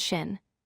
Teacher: The sound is sharper and more forward in your mouth, while the SH sound is deeper and rounder